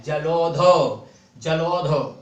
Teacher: तो छोटा आ और ओ के साथ औ का मेल देखें, जैसे जलोध, तो देखो औ की मात्रा पर बलाघात हो रहा है